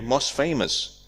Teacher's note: most famous, we drop the t. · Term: elision